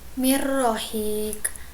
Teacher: si nun sukunnya itu dimasukkan ke dalam huruf ro, jadi nunnya itu seolah-olah dilebur gitu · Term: idgham bila gunnah, idgham Kamila